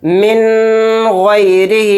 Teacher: اس کو غلط اس طرح سے پڑھتے ہیں لوگ جو کہ نہیں پڑھنا ہے، من غیرہی، یعنی نون کو ناک میں بہت دیر غنہ کیا